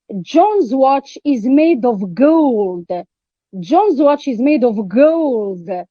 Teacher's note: Here, emphasis is put on the word gold. It's put, emphatic stress is on the word gold.